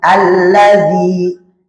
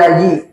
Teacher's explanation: Tempat keluar huruf dzal berada di ujung lidah bertemu dengan gigi seri bagian atas.